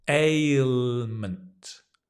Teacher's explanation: it's a sliding vowel so you see my mouth changes a alement always slow down with difficult words ailment look at